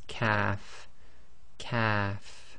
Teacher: Calf, calf is again touching the soft palate, but it's slightly more forward than the qaf, and it's just said normally quite softly as calf, calf.